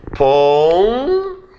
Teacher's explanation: A sílaba tônica é o pé, tem um ditongo aberto aqui.